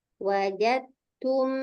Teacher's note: dalnya tidak kita kolkolahkan, langsung dibaca ke huruf ta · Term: idgham